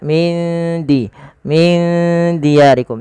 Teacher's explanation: Hukumnya sama sebagaimana ketika ada nun mati bertemu dengan huruf fa, yaitu disamarkan nunnya kepada huruf dalnya. Maka huruf dal itu makhrajnya dari ujung lidah kita yang bertemu dengan perbatasan antara gigi atas dan gusinya.